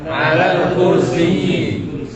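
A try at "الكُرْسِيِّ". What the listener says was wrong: Al-kursi atau al-kursiyyi? Kursiyun. Musyaddada al-ya. Musyaddadatul ya, ya-nya syaddah begitu ya. Nah, fa naqra'una 'alal kursiyyi. Nah, berarti ada ayat kursi itu ayat kursiyyi. Nah, kursiyyi, ayatul kursiyyi.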